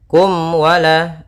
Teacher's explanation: Nah, di sini ada mim mati bertemu dengan waw. Yang mana waw termasuk huruf idhar syafawi, maka harus jelas suara mimnya tidak boleh ditahan.